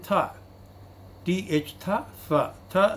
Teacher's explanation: It is dental, it is also voiceless as well as aspirated.